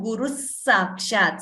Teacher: So here Guruhu Sakshat, when you combine the Sandhi, that is the rules of combining letters in Sanskrit, the Visarga gets replaced by another Sa. So Guru Sakshat, instead of the Visarga, we hear Guru Sakshat. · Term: Visarga Sakara Sandhi